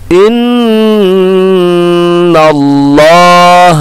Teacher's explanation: lafaz Allah, lafaz jalalah kita tebalkan ya, karena sebelumnya berbaris fathah